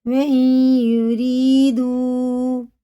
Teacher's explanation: واو ساکن سے پہلے پیش ہے، الٹے پیش کی طرح یہ بھی کھینچ کے پڑھیں گے، 4 الف کے برابر اسے کھینچ کے پڑھنا ہے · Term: مد منفصل